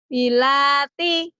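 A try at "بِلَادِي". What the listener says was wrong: Ini dal. Biladi. Kalau tak mah bukan begitu. Biladi, bukan bilati ya. Biladi.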